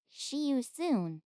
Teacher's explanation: It has, like, an SH sound in there when it doesn't belong.